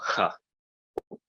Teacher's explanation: it ends up sounding like a breathy H sound